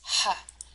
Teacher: you can feel that the back of your throat gets smaller and you're forcing your uh the air through that space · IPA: /h/